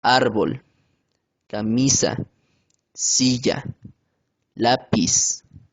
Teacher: son palabras de más de una sílaba el golpe de voz recae sobre la penúltima sílaba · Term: graves